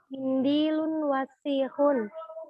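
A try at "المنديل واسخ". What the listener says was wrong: Al-mindilu. Ya, bukan al-mindilun. Wasihun, pendek. Wasihun, ya. Jadi kalau sudah ala alif lam, maka tidak boleh lagi di akhirnya dibacakan tanwin. Karena alif lam dan tanwin ini walaupun bersaudara, tapi dia nggak akrab.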